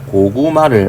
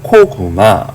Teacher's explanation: 이 가운데 기억은요, 두 번째 기억은 외국 사람들한테는 요게 유성음으로 들립니다. 그래서 G로 들리는 거죠. 얘는 K고요. 자, 왜 얘가 유성음이 되냐면요, 모음과 모음 사이에 위치하면은 모음과 모음은 둘 다 유성음이기 때문에 이 사이에 있는 음은 자연히 유성음이 됩니다.